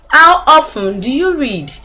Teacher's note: you see the modulation it comes up and then it falls down